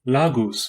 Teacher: it is a coronal lateral approximant usually dental though sometimes alveolar depending on the dialect pronounced like the l in liquid it is transliterated as the